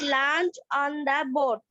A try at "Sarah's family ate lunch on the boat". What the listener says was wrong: At হবে না ate হবে? ate বাবা, at তো এটি at, তাই না? আর এটা হবে ate, ate, ate।